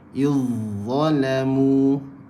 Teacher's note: Izzalamu, kan, masuk terus huruf zal ke dalam huruf dha